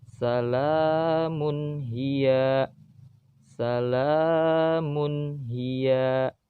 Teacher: Di situ juga sama, ada tanwin bertemu dengan ha, maka harus dibaca jelas.